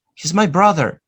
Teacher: Notice, where is the stress? Brother. No he, no is, no my, brother.